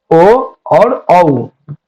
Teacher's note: ओ और औ का जो उच्चारण स्थान है कंठोष्टम में, कंठ और ओष्ठ दोनों लगते हैं